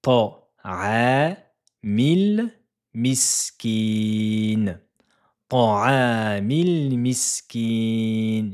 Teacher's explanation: voyelle longue de deux temps sur la lettre ayn